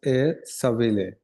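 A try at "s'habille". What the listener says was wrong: সাবিলে না double L silent হবে সাবিয়ে sorry সাবিয়েও না সাবি কি হবে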